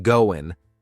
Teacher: in British English, you might hear gonna or even goin' without the G sound